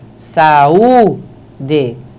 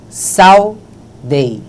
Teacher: se pronuncia de uma vez só, porque esse U é uma semivogal